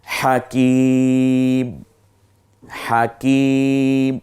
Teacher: এখানে এক আলিফ টানার জায়গায় আমরা ইচ্ছে করলে যেহেতু থামবো, 3 আলিফ পর্যন্ত টানার অপশন আছে